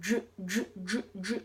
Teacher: This one could be pretty critical too because it's not the exact same sound as you pronounce in the English J. We usually round our lips by saying j, j, j, j. Well, we don't round our lips all the time like j, j, j, like that.